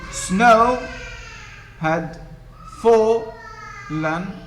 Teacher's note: This is trochaic. Strong, weak. Strong, weak.